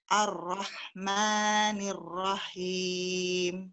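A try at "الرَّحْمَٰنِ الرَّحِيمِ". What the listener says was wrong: Kembali lagi matnya, tolong disempurnakan Bu. Maknya hanya 2 saja. Ar-Rahmanir Rahim. Maknya 2 aja.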